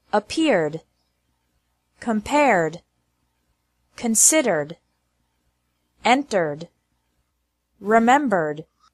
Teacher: e d is pronounced like d with no extra syllable after verbs ending with an r sound